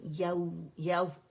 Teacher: اور یا کے لیے ایک کاؤنٹ کے لیے آواز اوپر جائے گی, کیونکہ واو سکون سے پہلے فتح آ رہی ہے, تو واو لین ہے, اور نرمی سے واو کو ادا کریں